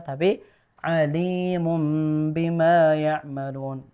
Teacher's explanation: Jadi alim yang panjangnya di lamnya ya, bukan alimum, bukan alimum bima, tapi alimum bima ya'malun begitu.